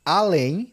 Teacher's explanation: Além nós temos oxítono aqui, ó, só duas sílabas e a tônica é a última